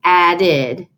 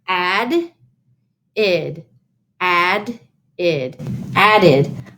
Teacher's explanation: e d that's the word added added added so e d inflected ending ed is making the id sound in that word